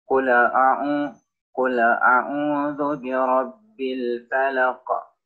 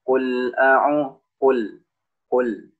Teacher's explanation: lam bukan salah satu huruf yang memiliki pantulan suara atau yang disebut dengan huruf Qalqalah